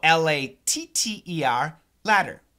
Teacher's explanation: so la tter ladder the ladder absolutely a flap T and when we do a flap T there shouldn't really be any vibration